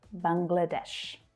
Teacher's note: That middle syllable reduces down to the schwa,